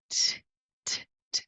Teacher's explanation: o T do inglês é só a pontinha da sua língua encostando ali na parte de trás dos dentes, quase rolando um soprinho.